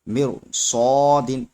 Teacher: را ساکن کے بعد حروف مستعلیہ میں سے صاد حروف مستعلیہ میں سے یعنی موٹا حرف آ گیا، اس لیے را بھی موٹا ہوگا